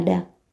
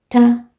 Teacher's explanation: Kwa hivyo da ni sauti guna. Hali ta ni sauti isoguna au siguna.